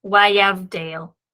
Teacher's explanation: The daleth, therefore, is following the consonant sound of the beth, and therefore that dagesh that we have in the daleth is in fact going to be a lene, hardening the sound of the daleth. So wayavdale. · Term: dagesh lene